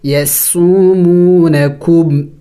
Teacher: یسومو دونوں واو مدہ ہے، ایک الف کے مقدار کھینچیں گے.